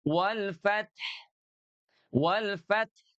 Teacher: Jadi ada bunyi 'hu' yang dihilangkan karena merupakan sukun, tetapi ditunjukkan dengan gerakan bibir. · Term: ismam